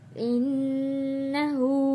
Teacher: ہا کے اوپر الٹا پیش ہے تو ایک الف کے برابر کھینچ کر پڑھیں گے